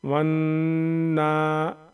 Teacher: नाक में आवाज़ को छुपा करके भिन भिनाएंगे एक अलिफ के बराबर 1-2 सेकंड के आसपास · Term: गुन्ना